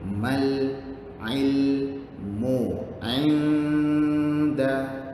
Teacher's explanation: Innamal mal alif lam komariah. Alif lam yang di atasnya ada tanda sukun. Lamnya berbunyi sangat clear.